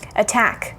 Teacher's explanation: attack has two syllables attack and the syllable that we stress is the second one we don't say attack we say attack attack and that stress